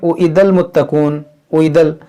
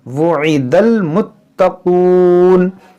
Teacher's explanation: یہ ہے حمزہ کی آواز ہوتی ہے او اور واو کی آواز ہوتی ہے وو